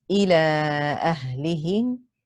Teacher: It is the permissible separated mud, extended for 2 or 4 or 5 counts. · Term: mud jaiz munfasil